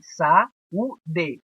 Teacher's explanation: Um hiato, porque a gente tem saúde. A gente tem o A e o U lado a lado, porém em sílabas diferentes.